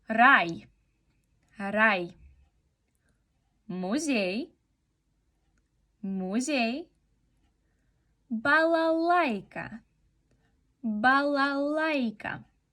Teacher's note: Y es nuestra semivocal que siempre va tras vocal y se pronuncia unida a ella. Entonces solo es como un golpe de voz que hacemos. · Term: I краткое